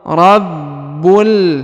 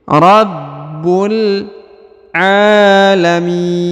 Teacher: huruf ba ditahan dan ditekan ya karena ada tanda tasdid